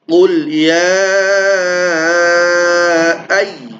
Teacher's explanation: ay ya yang bertasydid maka dibaca nabr ditekan ya